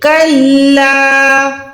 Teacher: کاف کو لام کے ساتھ ملا کے لام لفظ لا کو 1 سیکنڈ لمبا کرنا ہے